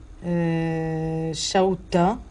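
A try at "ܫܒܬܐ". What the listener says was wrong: Non, Shabsa. Shabsa. B est redoublé, donc il n'est pas spirantisé, et c'est le T qui va l'être.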